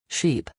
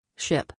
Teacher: These two words are often confused by non-native speakers because their vowel sounds are so similar. Sheep has a longer e sound while ship has a short I sound.